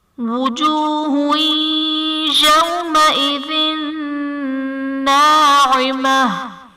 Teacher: وجوہ یومئذ میں ہا پر دو پیش کی تنوین، تنوین کے بعد حروف یرملون میں سے یا ہے تو یہاں پر ادغام مع الغنہ کا قاعدہ ہوگا، یعنی تنوین میں ہم غنہ کر کے پڑھیں گے۔ یومئذ واو ساکن سے پہلے حرف پر زبر ہے، واو لین کا قاعدہ ہے، اس لیے ہم اسے بغیر کھینچے بغیر جھٹکا دیے نرمی سے معروف پڑھیں گے